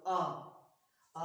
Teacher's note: सबसे ज्यादा जिस स्वर में उच्चारित करने से मुंह खुलता है वह केवल आ स्वर है। आप अकेला बोलो आ बोलोगे सबसे ज्यादा मुंह खुलता है, तो इसमें आएगा आ, ये आएगा विवृत में।